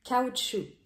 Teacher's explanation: we did not pronounce the C at the end of the word